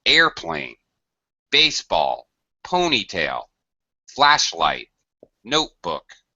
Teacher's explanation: we express a word that's made up of two words uh there's a certain pitch pattern you always say the first word high and the second word low